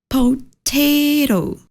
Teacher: Any amin'ilay ro no misy flap T satria izy mipetraka eo anelanelan'ny A sy ny O.